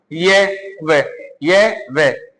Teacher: आप ये और वे का उच्चारण करो, ये वे, ये वे, इससे हमारी जीभ कहीं टच नहीं होती। इनका या इनके उच्चारण में जीभ स्पर्श नहीं करती है, स्पर्श नहीं करती है, स्वर की तरह जैसे स्वर का हम उच्चारण करते हैं ए आ ई उ ऊ ए ओ ओ। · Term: अर्ध स्वर